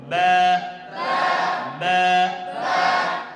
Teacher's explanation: দুই ঠোঁটের ভিজা অংশ হইতে বা এটা উচ্চারণের পর মুখ খুলবে